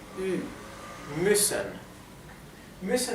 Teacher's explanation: U umlaut es algo intermedio entre una I y una U